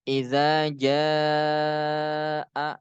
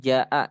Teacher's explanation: Ja itu kan dibacanya panjang tuh karena setelah huruf ja tuh ada alif kan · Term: mad wajib mutasil